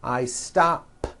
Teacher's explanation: I stop ends with an unvoiced P